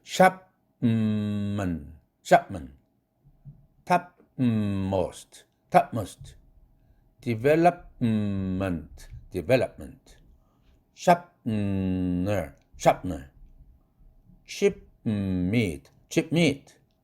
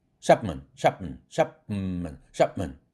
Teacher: 비개방음 입으로는. 그런데 코로는 샵만 사운드 비음 발음하느라고 푸 사운드가 코로 새버리네요. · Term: nasally released